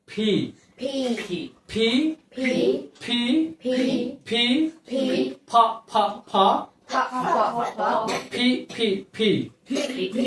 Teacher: তারপর হচ্ছে ফি প এবং ফ এর মাঝামাঝি দুই ঠোঁট লাগিয়ে বাতাস বের করে দেয়